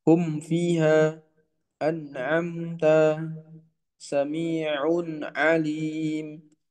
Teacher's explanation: Yang ketiga adalah guna tidak sempurna pada nun dan mim ya, sukun yang dibaca izhar